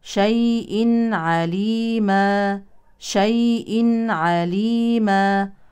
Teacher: تنوين يليه عين يعني اظهار حلقي شيء عليما شيء عليما وقفا عن تنوين النصب نقم بالف